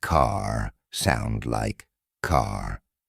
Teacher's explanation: the American accent often uses a strong R sound